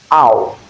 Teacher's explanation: The tongue moves from the low back where you have ah to the high back where you have oo. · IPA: /aʊ/